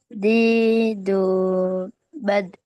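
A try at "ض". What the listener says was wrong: Dilemesin lidahnya, ya. Jadi hanya sekedar menyentuh dan nggak perlu kamu kerasin. Kemudian tekanan udaranya juga nggak perlu dikerasin juga. Lembut aja, lembut aja. Allah, bu, bab.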